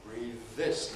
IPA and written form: ˈbriːð ˈðɪs (breathe this)